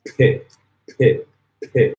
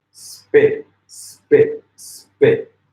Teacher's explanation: Okay, so okay, so you have this concept in linguistics and phonology called aspiration, which means a little puff of air is coming out of your mouth. So in English, when we say pit, there's a little puff of air.